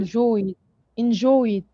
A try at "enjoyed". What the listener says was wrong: Sometimes we add more vowel sound by saying enjoyed, id. No, enjoyed, enjoyed. It's not enjoyed, it's enjoyed, enjoyed.